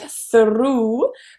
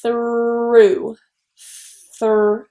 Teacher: Don't roll the R, this is not trilled in English. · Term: R sound